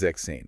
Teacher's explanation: drop the s from sex it becomes zexane it just flows so much better